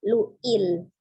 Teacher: Ada hamzah sukun lu ya, terbaca harus hamzah sukun, lu'il, sama lam sukunnya tidak dipantulkan ya, sifatnya lunak saja, maka agak dimiringkan ujung lidahnya pengucapannya supaya dia tidak memantul